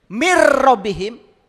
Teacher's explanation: mir enggak boleh min itu idgham bila guna nun mati ketemu dengan lam